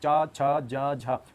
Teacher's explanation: अब बोलेंगे चा छा जा झा, तो आपकी जो जीवा है तालु को स्पर्श करती है।